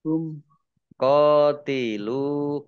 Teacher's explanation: mim sukun bertemu dengan huruf ta bacaan izhar syafawi dibaca jelas